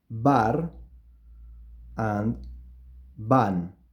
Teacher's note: So you see that it's the same sound, and the sound that I am producing is a bilabial B.